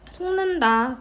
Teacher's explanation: 뒤에 니은의 영향을 받아서 기억이 이응으로 비음화가 됩니다.